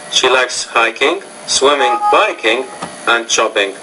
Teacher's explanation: you're slightly inflecting or rising your tone after each item except the last item in the sentence, right? And you're also pausing after each item because they represent thought groups. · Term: items in a series